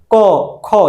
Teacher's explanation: ক, খ, দেখেন তো কোন জায়গা থেকে আসতেছে, একদম কণ্ঠের ভেতর থেকে আসতেছে কথাগুলো। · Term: কণ্ঠধ্বনি